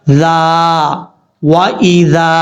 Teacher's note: اس کا مخرج زبان کا سرا اوپر والے دانتوں کے اندرونی کنارے سے لگے